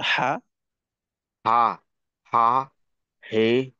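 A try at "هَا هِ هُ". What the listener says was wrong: জি, হায়ের ক্ষেত্রেও আরেকটু চাপ রাখতে পারলে উচ্চারণটা আরো সুন্দর হবে ইনশাল্লাহ।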